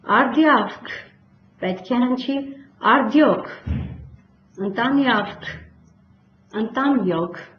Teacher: Հաջորդ ե ավ եռաբարբառը արտասանվում է յո